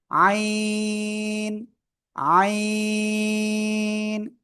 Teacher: কোন বাতাস বের হবে না জাস্ট চার আলিফটনে উচ্চারণ করবেন